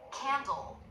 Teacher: you'll see the tongue tip come down. It's not up for the dark L. Candle. Dark L made with the tongue tip down, back of the tongue doing the work.